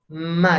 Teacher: Ma ini anginnya keluar tapi dari hidung, Pak. Ma, karena kita blokade jalur bibirnya, jalur angin dari mulutnya kita blok dengan kita mingkem. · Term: gunnah